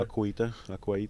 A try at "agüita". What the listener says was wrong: You don't. It's not aqua in Spanish. It's agua. It's softer. It's with a G. Agua.